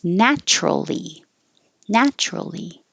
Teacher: we make it shorter drop the middle syllable